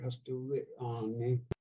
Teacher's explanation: if a fading syllable comes before a glottal stop, a syllable starting with a glottal stop, like on, starts with a glottal stop, written with a period, then it automatically becomes glottalized. So instead of saying hastu ri on, they just say hastu ri on.